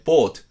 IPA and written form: boːt (boat)